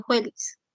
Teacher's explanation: alternancia consonántica entre la labiodental sorda, fricativa labiodental sorda y la fricativa velar sorda